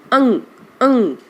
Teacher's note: जो अनुस्वार का चिन्ह है, ऊपर बिंदु है, उसका उच्चारण केवल नाक तक रह जाएगा, उसे आपको अपने कंठ में नहीं लाना।